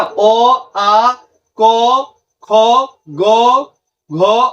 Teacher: गला से जो आवाज निकल रहा है कंठ से बिल्कुल कंठ से जो आवाज निकल रहा है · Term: कंठ वर्ण